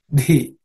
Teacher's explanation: This dhi is the fourth letter in the tha varga, so it has to be aspirated.